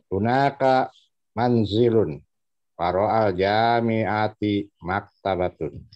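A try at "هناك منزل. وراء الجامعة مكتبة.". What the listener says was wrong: Ya, ini pertama panjang pendeknya ada yang masih ketabrak sedikit.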